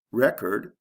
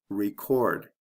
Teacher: with the first one there's a short e and the second one there's a long e